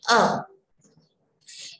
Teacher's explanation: जब विसर्ग लग जाता है तो हम इस अक्षर के साथ में ह का उच्चारण करते हैं